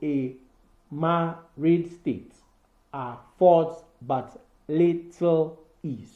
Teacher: 5 metric feet with each unstressed syllable followed by 1 long stressed syllable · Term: iambic pentameter